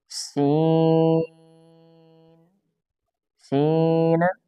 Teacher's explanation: سین غلط، اس کو کھینچنا ہے، مد ہے، مد لازم ہے